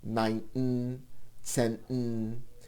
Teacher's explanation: It takes practice not to insert a vowel, and the T is not fully aspirated. Think of it like a bounce on the N, and the second one has a very hard start.